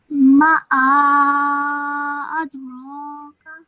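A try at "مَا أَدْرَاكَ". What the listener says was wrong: Okay, like I said, this would not be ma'a, okay? This is ma adraka. Do you understand why it's not a ah? Do you understand that why this is not separate to this? This is all together as one.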